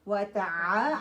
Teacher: عین پھر middle part of your throat سے نکلے گا